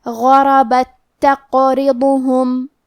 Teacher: کلمت غربت میں غین کی ادائیگی حلق کے اوپر والی حصے سے ہے اور غین حروف التفخیم میں سے ہے تو ہمیں یہ حرف کو موٹی آواز میں پڑھنا ہے۔